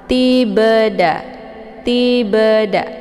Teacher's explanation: cara bacanya bnya dipantulkan dengan pantulan ringan Ti ba Ti ba ada bunyi be tapi tidak terlalu kuat